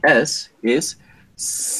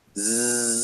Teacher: If you put your fingers and you touch your throat while you're pronouncing the Z, you're going to feel the vibration of your vocal cords while you pronounce the Z, right? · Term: voiced